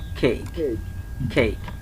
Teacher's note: এখানে অ্যাসপিরেশন হয়েছে। যখন আমরা কেককে কেক বলছি তখন কি হচ্ছে, কয়ের জায়গায় খ হচ্ছে